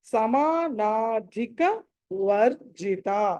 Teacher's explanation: సాంద్ర కరుణ సమానాధిక వర్జిత. సమానాధి, ధి అన్నది ఇక్కడ మహాప్రాణం, ఒత్తి పలకాలి. సమానాధిక వర్జిత.